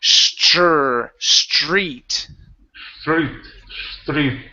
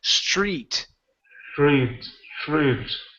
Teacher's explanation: switch that TR to a CHR so it's street